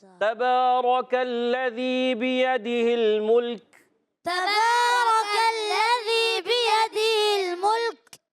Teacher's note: کاف کہاں سے ادا ہوتا ہے؟ زبان کی جڑ اور تالو کا سخت حصہ